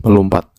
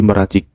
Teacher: Penghilangan fonem en pada morfem men dan pen karena bertemu dengan morfem yang berawalan dengan fonem y, l, r, w, dan nasal seperti n dan eng. Contohnya, men ditambah lompat menjadi melompat.